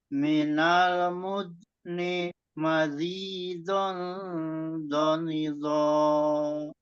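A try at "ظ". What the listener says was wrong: Iya, jadi di rokhawah ya Pak ya, di rokhawah ya tetap di situ di rokhawah dan di istilah sedikit lagi, di istilahnya ditambah lagi sedikit. Memang agak capek huruf-huruf yang tebal ya, istilah seperti ini terus ditambah rokhawah itu memang menguras tenaga.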